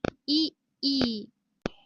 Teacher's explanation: तालू स्थानापासून उच्चारले जाणारे स्वर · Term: तालव्य